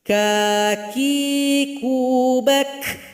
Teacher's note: Ketika sukun jelas sekali bunyi hamas ada nafas yang mengalir. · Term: huruf kaf